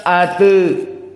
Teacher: Adapun ata menjadi ate dinamakan dengan at-taklil.